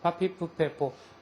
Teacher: 빠도 아니고 파보다는 약간 더 강렬한 파열음. 거기다가 마차름이 섞이는 파차름이라고 생각을 하면 될 것 같아요.